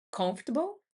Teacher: Então, por exemplo, duas palavras que eu vejo porque o pessoal tem muita dificuldade, é comfortable, que é um conf, que é o principal, a sílaba tônica, table, né?